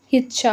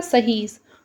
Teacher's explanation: शब्द के आरंभ में और शब्द के मध्य में आने वाली ई ध्वनि ह में परिवर्तित होती है